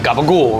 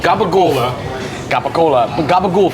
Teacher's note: the vowel on the end is gone